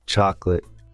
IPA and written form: ˈtʃɒklət (chocolate)